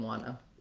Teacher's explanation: then in nt blends we often leave the tea off so wanna comes from the t dropping out entirely